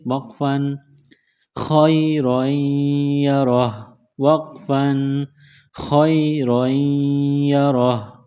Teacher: جب وقف کریں گے، سٹاپ کریں گے تو ہا کو سائلنٹ کریں گے